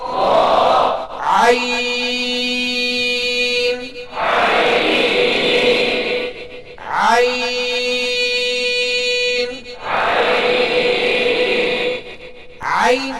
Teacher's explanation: हल्क के दरमियान से अदा होती है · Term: ऐन